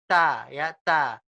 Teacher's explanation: Kalau da ditolak, kalau ta ditolak tapi agak ditiup.